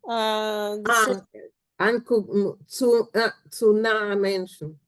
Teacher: in the Southern dialect, the tsu ends up with tsun before a vowel